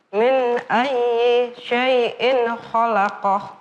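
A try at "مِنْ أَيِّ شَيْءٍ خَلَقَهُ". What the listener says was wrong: Iya, dimuluskan, jangan berhenti-berhenti.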